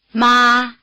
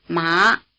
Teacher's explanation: the high tone stays level while the rising tone climbs sharply starting slightly below the high tone and reaching the top of the range